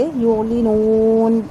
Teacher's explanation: وما یعلنون، یہاں پر نون یعلنون کا جو نون ہے اس کو ہم لمبا نہیں کریں گے، سوری یعلنون کا جو نون کا زبر ہے وہ ہم لمبا نہیں کریں گے، لیکن جب ہم وقف کریں گے یہاں پر تو پھر ہم اس کو مد عارض کے قاعدے کے مطابق چار حرکت لمبا کر کے یعلنون اس طرح پڑھیں گے